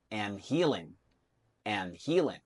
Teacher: The last sound of that word is V, so it should go linked with and. And when you read it fast, that D in and disappears. So you should say and healing, and healing.